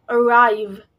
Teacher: This word has a main stress. This word has the main stress on the rav syllable, or the second syllable in this word.